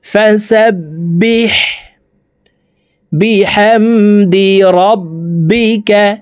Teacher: হলকের মধ্যখান থেকে হা হরফের উচ্চারণ হবে